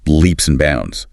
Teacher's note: the D in bounds often goes silent, and the word and can shrink to just leaps and bounds.